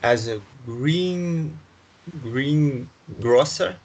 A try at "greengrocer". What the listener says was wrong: That's right. Greengrocer. Very